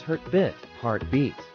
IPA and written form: ˈhɑrtˌbit (heartbeat)